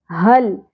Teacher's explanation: حل لام ساکن پہ قلقلہ نہیں ہونا چاہیے